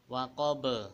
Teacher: Jadi di akhirnya waqab itu seperti ada huruf hamzah, namun yang lebih tepat yaitu tidak dimatikan dengan huruf hamzah. Jadi tinggal mengalir saja. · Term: qalqalah